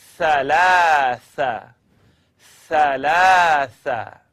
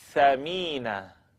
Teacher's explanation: blowing the air between your tongue and the edge of the top teeth.